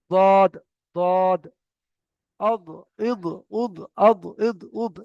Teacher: উপরের মাড়ির দাঁতের সঙ্গে এগুলো আপনার দাঁত, আর এটা হলো আপনার জিভ, তাহলে জিভের সাইডের কিনারাটা দাঁতের গোড়ার সঙ্গে লাগবে, লেগে দদ, দদ, আদ, ইদ, উদ, আদ, ইদ, উদ এমন ভাবে উচ্চারণ করতে হবে।